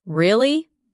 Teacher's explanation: For example, when you ask a question like, "Really?" your voice goes up slightly at the end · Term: rising tone